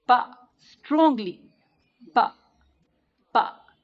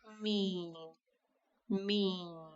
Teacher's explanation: The articulation point of ba is also the lips, but for ba, you close the lips with some force.